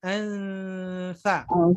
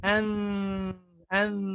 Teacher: posisi lidah ketika membaca dengung ikhfa sudah siap untuk mengucapkan huruf tsa